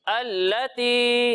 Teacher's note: या साकिन से पहले जेर आ रहा है, तो यहाँ पर या मद्दा होगा, तो इसे हम एक अलिफ के बराबर खींच कर पढ़ेंगे।